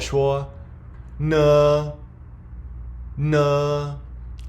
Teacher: the N is a bit nasal and it sounds like the n in no or Nation